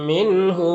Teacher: نون ساکن کے بعد یہاں پر ہا ہے حروف حلقی میں سے، تو نون میں اظہار حقیقی ہوگا، اسے جلد پڑھنا ہے، نون کو ظاہر کر کے جلد پڑھنا ہے۔